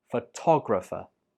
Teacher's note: The stress is on to.